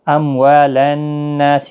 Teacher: نون مشدد پر غنہ ہوگا، نا الف مدہ بھی ہے، ایک الف کی مقدار کے برابر کھینچ کر بھی پڑھیں گے